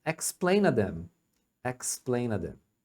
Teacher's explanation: o explain to, eles reduzem, o to reduz para a.